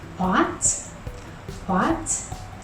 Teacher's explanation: just like pinyin tone 2, what has a rising tone. It goes from low to high.